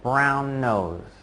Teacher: You just kind of let that N sound at the end of brown hang there for a short moment